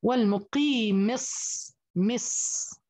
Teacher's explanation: بنتقل من الميم المكسورة إلى الصاد الأولى الساكنة، ثم بعطيها زمن زيادة بسبب أنه مشدد ورخو